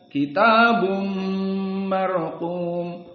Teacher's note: Maka di sini idgham bi gunnah dua harokat.